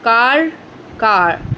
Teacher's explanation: British English often non-rhotic, final R not pronounced. Car, car. American English rhotic, R pronounced.